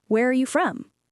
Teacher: It goes down at the end on the word from. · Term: Falling intonation